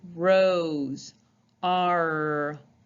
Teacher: your tongue also with the letter r goes to the top of your mouth but it's in the back part of your mouth